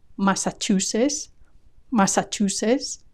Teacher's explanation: there's no hint of the final T